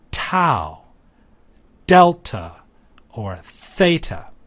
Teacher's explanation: when one enunciates these letters air flow is interrupted by the teeth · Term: dentals